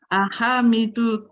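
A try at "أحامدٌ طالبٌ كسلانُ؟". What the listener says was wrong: Ahamidu atau ahamidun? Ahamidun ya. Ini boleh tanwin. Ahamidun talibun kaslanu.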